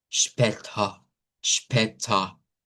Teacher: la A centralizada es más grave, es mucho más grave que la A hacia el frente